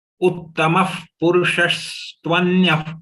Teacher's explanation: Nothing is long, everything is short in this charan.